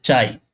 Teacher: চাই শব্দে দুটি স্বরধ্বনি আছে একটা হল আ একটা হল কি ই এখানে আ হল পূর্ণ স্বরধ্বনি আর ই হল অর্ধস্বরধ্বনি